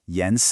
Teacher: That's a rising second tone followed by a light neutral tone. Then yens, a rising second tone, and then a sharp falling fourth tone